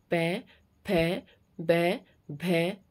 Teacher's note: उसके बाद आता है ओष्ठ, यानी कि जब इन व्यंजनों को बोला जाता है तो जो हमारे ऊपर और नीचे के होंठ है दोनों आपस में स्पर्श करते हैं। और ओठों को अगर हम बंद कर ले या ओठों को न हिलाएं तो इन व्यंजनों का उच्चारण भी नहीं हो सकता। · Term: प वर्ग